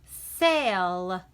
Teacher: the A doesn't completely say A, but the sound is kind of changing. Say, it's not really saying ah, but it's not really saying our name either.